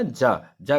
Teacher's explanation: जा कैसा व्यंजन है? तालु से बोला जाता है, तालव्य व्यंजन है।